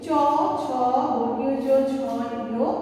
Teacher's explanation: তালুর সামনের অংশকে জিভের মাঝের অংশের সাথে মিলিয়ে বা স্পর্শ করে এই বর্ণগুলো উচ্চারিত হয়, এবং এদের নাসিক বর্ণ হচ্ছে ইয়। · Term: তালব্য বর্ণ